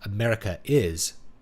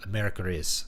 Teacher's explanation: the R kind of flicks between those words